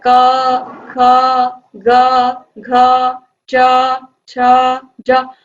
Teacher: आप देखते हो आपको पीछे से अ सुनाई देता है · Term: अ छिपा हुआ